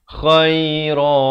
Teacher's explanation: Kha ni pula makhrajnya di hujung kerongkong.